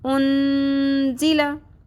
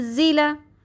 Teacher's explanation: زیلا، ان زیلا نہیں پڑھنا، بالکل یہاں پہ اخفا کرنا ہے، نون کی آواز کو چھپانا ہے، صرف ایک گونج سی سنائی دینی چاہیے